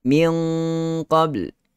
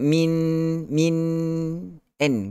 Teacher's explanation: Ikhfa tiada fungsi nun dan tanwin pada bahagian lidah tetapi masih lagi ada dengung.